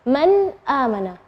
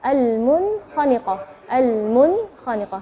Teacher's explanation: Nun sukun ketemu dengan hamzah, maka bacanya nunnya yang jelas.